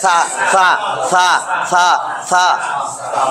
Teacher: এটার উচ্চারণ নরম করে হবে, জিহ্বার আগা, দাঁতের আগায়